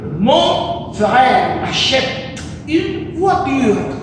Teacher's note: Aquí agudo es que el acento se coloca, el acento prosódico se coloca al final de cada palabra.